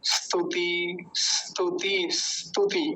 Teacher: ई की आवाज कहीं नहीं आती इस वाले ई की · क्योंकि वो आधा है ना दंत्य सकार, तो बड़ा जल्दी बोला जाएगा